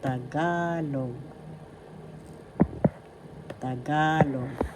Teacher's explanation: First syllable ta, second syllable ga, third syllable log. The accent is in the second syllable ga.